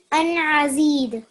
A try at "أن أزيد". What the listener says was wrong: Just one point here. So this letter, this is alif, but I'm hearing a bit of an ayn sound. So could you read it just very basic, just from an? An azid.